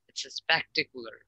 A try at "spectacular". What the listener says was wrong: Spectacular, yep.